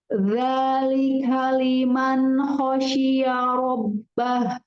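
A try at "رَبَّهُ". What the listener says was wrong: Rabbah, bukan robbah. Rabbah. Tipis nih.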